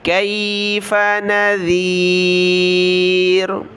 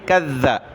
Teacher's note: ذال پر زبان نکالیں گے، کذ، اور با کو لام کے ساتھ ملایا، کذب الذین من قبلہم، من قبلی، لام زیر لی، ہا میم زیر ہم، قبلہم، فکیف کان نکیر۔